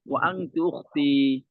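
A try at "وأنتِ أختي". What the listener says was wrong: ও আংতু মানে? উচ্চারণটা সুন্দর করে করেন। শুনতেছি ও আংতু।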